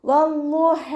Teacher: 2 ഹർഫുകൾ ഉച്ചരിക്കുന്ന കനം കൊടുക്കുക. ഹ തൊണ്ടയുടെ മധ്യഭാഗത്തു നിന്നാണ് വരുന്നത്. വസത്തുൽ ഹൽക്കിൽ നിന്നും അതിൻ്റെ സൗണ്ടിനെ വ്യക്തമാക്കിയിട്ട് ഉച്ചരിക്കുക.